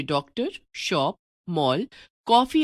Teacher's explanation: हिंदी में अंग्रेजी के अनेक शब्द जैसे डॉक्टर, शॉप, मॉल, कॉफी आदि आ गए हैं। इनमें लगने वाला स्वर न तो हिंदी का ओ स्वर है और न औ। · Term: आगत स्वर